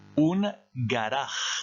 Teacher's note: vous avez la lettre u ici qui se prononce ou et la lettre g ici se prononce comme en français ga mais ici ça se prononcerait avec le fond de la gorge